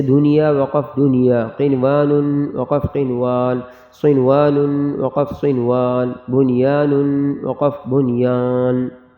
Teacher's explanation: یہاں آپ تفصیل میں بھی دیکھ سکتے ہیں کہ جو اوپر ہم نے چار لفظ پڑھے ہیں دنیا قنوان صنوان اور بنیان، تو اس کے بارے میں تفصیل ہدایت میں لکھا گیا کہ یہ چاروں کلمات بالکل غنہ نہیں ہوتے. ان چاروں کلمات میں غنہ نہیں کریں گے بلکہ اظہار کریں گے، نون ظاہر کریں گے